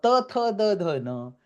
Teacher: For ta tha da dha the jivha gram touches the teeth.